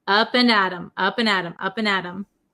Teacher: it becomes a flap T so it sounds like a D sound